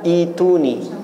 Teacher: hamzahnya dihilangkan sebab berat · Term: mad badal